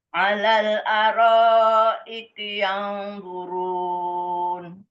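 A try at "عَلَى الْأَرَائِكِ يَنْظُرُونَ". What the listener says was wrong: Yang agak lama sedikit.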